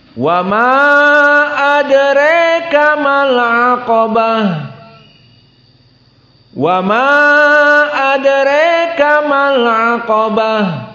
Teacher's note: Maka di sini dibaca dengan tawassut dan mad jaiznya dalam keadaan tawassut dan al-imalahnya pada adraka. Maka kita baca wa ma adraka mal aqabah.